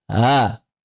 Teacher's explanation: membaca hamzah kedua dengan suara atau bacaan di antara hamzah dan mad, yaitu mengubah sifat syiddah hamzah menjadi rakhawah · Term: hamzah musahalah